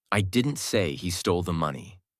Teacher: Stress on I changes the meaning.